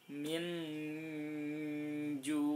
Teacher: minnya itu dibaca terang tapi setelah itu agak mendengung. Min ju, nunnya tetap dibaca agak terang, tapi kemudian samar-samar. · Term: ikhfa hakiki